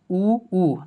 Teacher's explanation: जब उ और बड़ी उ का उच्चारण करते हैं तो एकदम मुंह एकदम छोटा सा गोल हो जाता है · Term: कम विवृत